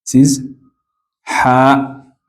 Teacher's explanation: Ha comes in the middle, comes from the middle of your throat.